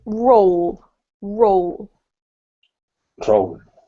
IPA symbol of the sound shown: əʊ